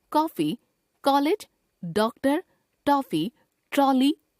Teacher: अ अंग्रेजी से हिंदी भाषा में आ गया है। इसका उच्चारण आ तथा ओ के मध्य का प्रतीत होता है। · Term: आगत स्वर